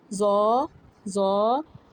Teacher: the tip of the tongue comes out slightly between the upper and lower front teeth.